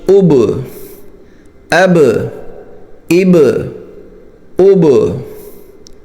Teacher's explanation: बा रूफे कल कला में से है लेकिन बारीक है · इब इसको इब नहीं पढ़ रहे यह छोड़ना कलकल कहलाता है